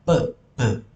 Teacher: itu artinya menggunakan dua bibir plosif itu artinya meledaku ya jadi menggunakan dua bibir dan meledak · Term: bilabial